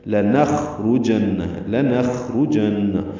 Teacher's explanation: یہ لام لمبا نہیں کرنا، لا نخرجن نہیں پڑھنا